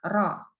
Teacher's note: Jadi pas baca ro, kan mulutnya kebuka tuh, antara lidah sama langit-langitnya kebuka. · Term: infitah